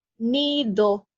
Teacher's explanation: they don't pronounce de like in English or in Vietnamese, because it's much softer than in English